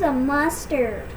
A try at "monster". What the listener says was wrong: He's a mustard? Does that look right? This word ends with an R. Mustard. What does that mustard end with? What could that word be?